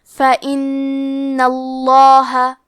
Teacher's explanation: لفظ الجلالہ کے لام کا حکم ہے تفخیم، تو ہم حرف اللام کو موٹی آواز میں پڑھیں گے